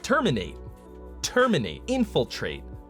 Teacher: Every single one of these words has the stress on the first syllable when you say it like a human being